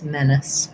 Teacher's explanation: the ACE is a reduced vowel because the men part is long. So I'm going to think about my length being here, and then my menace is just going to be a short little I sound or even a schwa sound, with CE saying that the S sound in this word. · I just want to be very short and light on that vowel. Length on the men and short on the is. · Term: first syllable stress